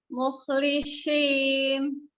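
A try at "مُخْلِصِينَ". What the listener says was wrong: Tahan ya, jangan gitu. Jadi mulutnya jangan dibuka. Mukhlisin. Keluar udara terus. Dari pas masuk sukunnya sampai ke lamnya udaranya jangan berhenti. Coba. Di ini ya, nanti latihannya di sukunnya ya.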